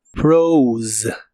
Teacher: Es un verbo irregular y el pasado usa una O. Esta O se pronuncia como OU y el final también usa la Z que es vibrante.